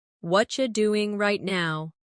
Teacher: What are you doing right now? In natural speech, what are you becomes whatcha.